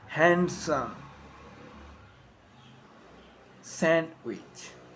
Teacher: t yeah it can't be silent too on st handsome sandwich so i am not pronouncing the d in sandwich i am just pronouncing the consonant and sound before it take